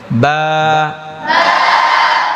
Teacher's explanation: দুই ঠোঁট মিশাবেন আর ছেড়ে দিবেন, বা। অনেকে বাটা পড়ার সময় ভুল করে ফেলে, বা বা এমনি বলে না, ঠোঁটের ভিজা অংশ থেকে এই যে বা, ঠোঁট মিশাবেন আর ছাড়বেন, বা বা বা।